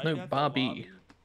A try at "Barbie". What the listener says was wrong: He's saying Barbie, but it sounds like he's saying Bobby.